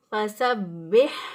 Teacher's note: گلے کے درمیان سے ہا ادا ہوتا ہے، وسط حلق سے ہا ادا ہوگا گلے کے درمیان سے